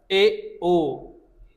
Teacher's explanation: अर्ध संवृत में ए ओ थोड़ा सा खुलता है कि नहीं? आधा खुलता है ना